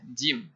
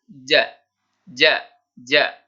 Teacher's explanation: Huruf jim, ini huruf di tempatnya di tengah lidah, jim. Ketika berfathah, maka dibacanya ja.